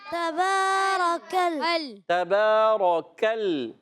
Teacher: لام پر تشدید ہے، ذرا رک کر ادا کریں گے۔ لام کا مخرج ہے زبان کا کنارہ، جب ضاحک سے ثنایا تک کے مسوڑوں سے، اب کہیں گے ضاحک کیا، ثنایا کیا؟